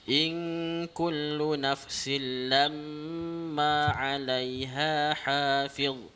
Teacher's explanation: Atas mim tu didengungkan kerana wajibal gunnah.